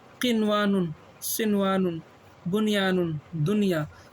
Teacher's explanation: کیا مطلب، اگر یہی چیز نون ساکن اور یہ جو یا ہے، نون ہے، میم ہے، واو اگر ایک ہی کلمے میں آ جائے تو وہاں پر اظہار ہوگا۔ اظہار یعنی ظاہر کر کے پڑھیں گے، غنہ نہیں کریں گے۔ اب دیکھیے کیا ہے، ادغام اور غنہ نہ ہوگا، جیسے قنوان، سنوان، بنیان، دنیا۔